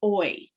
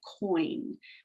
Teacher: it's two vowels that have come together to make a sound, and they're gliding from one to the other. The oi sound, like coin, would be an example of that. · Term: gliding vowels